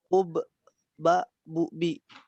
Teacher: Sifat-sifat nafas ditahan atau jahar. Suara tertahan